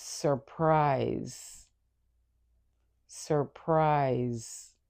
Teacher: even though this is spelled with an S, the sound is that of a Z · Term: Z sound